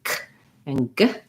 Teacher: The back of my tongue is lifting. It's touching against the top of my mouth and then releasing.